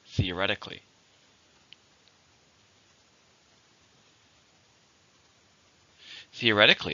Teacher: we have theoretically same meaning but it's an adverb it has still has five syllables stress on the third